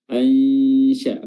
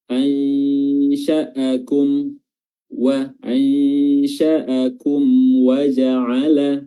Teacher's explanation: Cara menyamarkannya adalah dengan meletakkan lidah kita pada posisi huruf shin. Ainsya, pada makhraj huruf shin itu, yaitu pertengahan lidah diangkat bertemu dengan langit-langit. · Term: ikhfa haqiqi